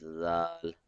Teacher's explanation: So the tip of the tongue will be touching at the edge of the upper front teeth.